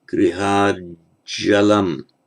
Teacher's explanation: Where you have a final t followed by a j, it has the effect the t merges into the j